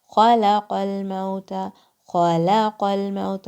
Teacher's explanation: Kha is throat letter. It comes from the top of your throat.